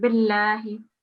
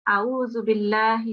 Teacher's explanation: It's just a thin sound, billahi. Because we've got a kasra, we haven't got a fatha or dhamma